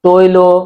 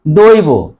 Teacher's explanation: শেষের অ এর উচ্চারণ ও এর মত হয়েছে